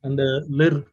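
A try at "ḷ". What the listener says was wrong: This is Liri, not Lir. Liri. L-R-I. Yeah, Liri.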